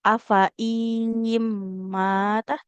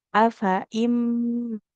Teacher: Meskipun di sini hamzahnya kasrah bertemu dengan ya, hamzahnya tidak perlu kita baca panjang. Langsung masuk ke nun sukunnya.